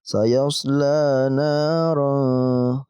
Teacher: Dibacanya harus panjang. Dan panjangnya pun 2 harokat saja.